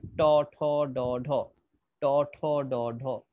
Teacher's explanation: এই ট, ঠ, ড, ঢ হচ্ছে উপরে মূর্ধা থেকে উচ্চারিত হচ্ছে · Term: মূর্ধন্য বর্ণ